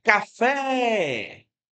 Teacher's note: Você percebe que a palavra tem duas sílabas. Você percebe que café, esse fé é a sílaba que mais se prolonga, é a sílaba de pronúncia mais forte. · em café, a sílaba tônica é a última. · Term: palavra oxítona